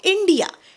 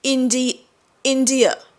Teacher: शेवटी आ नाही म्हणत ते शेवटी अ म्हणतात